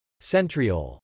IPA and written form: ˈsɛn triˌoʊl (centriole)